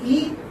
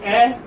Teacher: when you say E, it is closed, and when you say A, it's open